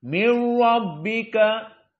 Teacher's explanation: Dan di sini min rabbika dengan tasdid maka lebih kuat tafkhimnya. Maka ra mufakhamah.